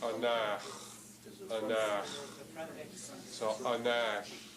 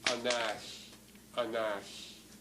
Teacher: the back X, I think, to me it sounds a bit more rough.